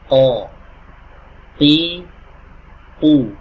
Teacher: pastikan pangkal lidah kita ini bertemu dengan langit-langit yang ada di atasnya, tapi langit-langit yang lunak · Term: qaf